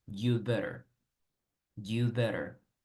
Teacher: Omiten el had. El had realmente no suena. Entonces, aunque escribamos had better, en realidad solo dices you'd better.